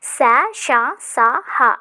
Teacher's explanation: ఊది పలికే వాటినే మనం ఊష్మాలు అని చెప్పేసి అంటాం అన్నమాట అంటే మనకి వాటిని ఉచ్చరించేటప్పుడు లోపల నుంచి మనకి గాలి అనేది వస్తుంది